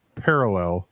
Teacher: the emphasis is on the first syllable thank you and not the third syllable [Laughter] right yeah I